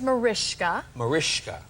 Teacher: In Hungarian, the s is an sh sound.